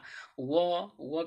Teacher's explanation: व का उच्चारण स्थान दांत और ओष्ठ दोनों हो जाएगा।